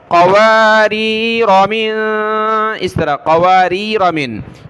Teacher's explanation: گے کیونکہ یہ بیچ میں ہے، یہاں وقف نہیں ہو رہا، را پر زبر پڑھنی ہے اور الف کو چھوڑ دینا ہے